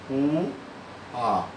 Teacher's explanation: No A ocorre uma anteriorização do som.